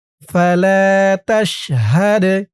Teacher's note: দাল কলকলার হরফ ধাক্কা দিয়ে পড়তে হবে